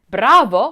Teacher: Bravo with a good roll of that R